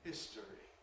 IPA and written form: ˈhɪstəri (history)